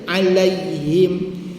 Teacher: Ya tanda mati ialah lin tanpa harakat, maknanya 1 harakat saja.